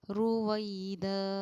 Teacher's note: جب 2 زبر پر ہم وقف کرتے ہیں تو ایک زبر کے ساتھ الف پڑھا جاتا ہے